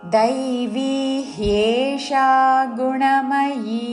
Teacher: దైవీ వి దీర్ఘము హేష హ కి యవత్తుతో హే షా మూర్ధన్యష రెండు దీర్ఘములు